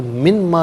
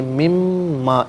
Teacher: نون ساکن کو میم کے ساتھ ملا کر میم کی آواز کو غنّے کے ساتھ ادا کریں گے